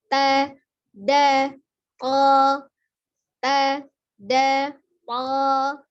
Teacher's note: Nah, ada sifat al-hams di ta tapi dia jahru, al-jahr di to, ta dengan da dia dibaca tipis, kemudian to-nya tebal ya. Tapi tidak ada perubahan untuk harokat fathahnya.